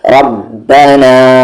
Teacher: با پہ قلقلہ کیونکہ اس پہ جزم ہے